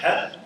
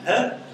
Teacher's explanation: Ha, that's pharyngeal, and ha is glottal. Ha, it's back.